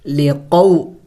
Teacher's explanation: واو ساکن سے پہلے زبر ہے تو اسے حروف لین کہتے ہیں، اس کو جلد پڑھنا ہوتا ہے